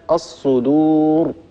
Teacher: الراء هنا مفخمة لأنها سكنت عروضا بسبب الوقف وقد سبقت بضمة